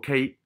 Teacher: K 音就係將脷嘅後半部分頂上去吊中嗰個位置啊，吊中上顎嗰個位置頂住，跟住拉落嚟噴氣。